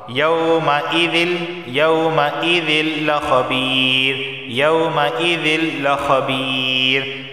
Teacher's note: تنوین کے بعد اگر لام آ جائے تو یہاں پر کیا ہوگا؟ غنہ نہیں ہوگا، صرف ادغام ہوگا